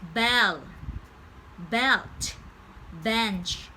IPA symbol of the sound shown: ɛ